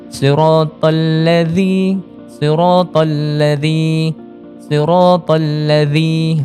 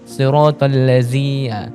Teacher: Huruf zal ini berbeza makhraj dia dengan huruf zai. Sebab zal ini kita perlu keluarkan sedikit lidah.